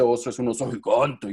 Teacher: ese oso es un oso gigante y bajamos la frecuencia fundamental